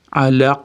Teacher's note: Aynga yo'liqqanligi uchun. Oxirida sukun berib to'xtaganimiz uchun yuqoriroq qalqala beramiz.